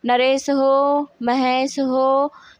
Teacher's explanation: तो ये जो पीछे जो इसमें हो की मात्रा में जो अधिक समय लग रहा है ना, यही प्लुत स्वर की मात्रा होती है।